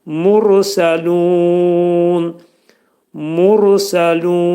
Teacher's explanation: Mursəlunda ra hərfi qalın deyiləcək.